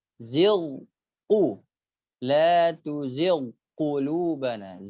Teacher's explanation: ghain dibaca tipis dan jangan sampai melebur ke huruf qaf